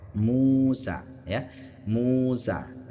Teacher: ketika huruf yang berharakat dhammah diikuti waw sukun. Panjangnya berapa? Panjangnya juga dua harakat. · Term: mad tabi'i